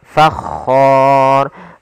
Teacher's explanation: ro yang dibaca dengan tebal maka dinamakan ro tafkhim karena sebelumnya ada huruf fathah dan kemudian bertemu dengan huruf mad maka ro-nya dibaca dengan tebal.